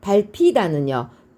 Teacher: 브와 흐가 만나서 거센 소리가 일어났어요. 자, 프로 바뀌겠죠.